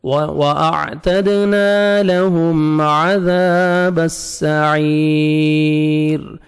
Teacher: یا مدہ ہے, لاسٹ میں را ساکن ہو جائے گا جب سٹاپ کریں گے. اور را کو آپ نے باریک کرنا ہے کیونکہ را ساکن سے پہلے یا ہے. آپ نے یا کو دیکھنا ہے.